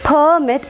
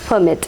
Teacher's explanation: the stress changes from first syllable to the second syllable. If it is a noun, stress will be marked on the first syllable as per the rule.